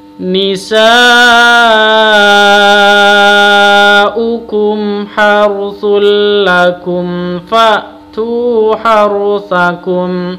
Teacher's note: Harusul, mim sukun, kum ha, mim sukun bertemu dengan ha, bacaan izhar safawi harus dibaca jelas